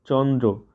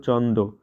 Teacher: কিন্তু উচ্চারণ করতে বেশ কষ্ট হয়। মানুষ ক্রমে এর উচ্চারণ করতে লাগলো চন্দ। র ফলা বাদ গেল। উচ্চারণ সহজ হয়ে উঠলো।